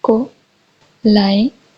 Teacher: Stress falls on the second syllable